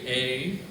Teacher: It's A and E together, two vowel sounds.